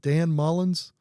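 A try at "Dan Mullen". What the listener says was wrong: I like the fact that you put an S on it. No, it's Mullen. But the state people hate the S.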